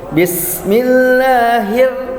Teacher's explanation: Bis ya, sinnya mempunyai sifat as-sofir, jelas desisnya ya.